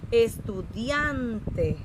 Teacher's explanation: esta es la sílaba tónica, excelente.